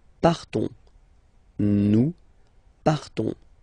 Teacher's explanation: So classic ending ONS, you don't pronounce the S, you just have this on sound nasal